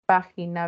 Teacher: Las esdrújulas, está la fuerza de voz en la antepenúltima sílaba. Siempre llevan tilde.